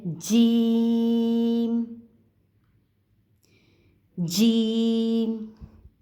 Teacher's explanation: جیم کی جو ادائیگی ہے وہ ہے درمیان زبان اور تالو سے، درمیان زبان اور تالو سے، جیم۔